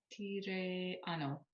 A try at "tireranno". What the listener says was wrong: Tireranno. You've got to keep that last R there. So you've got a double R, 2 R's in there. Tireranno.